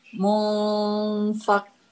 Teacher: Jadi ditahan 3 harokat dengan gunnah ya. Dan gunnahnya ini termasuk gunnah yang sempurna. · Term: Ikhfa